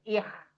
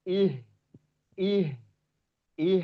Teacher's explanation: ketika dia sukun suaranya terdengar seperti k